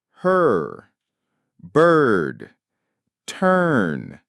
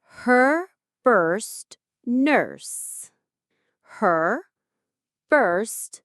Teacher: It's the sound, like in her, bird, turn. In all three, the vowel sound is completely taken over by that strong, muscular R. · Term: strong rhotic R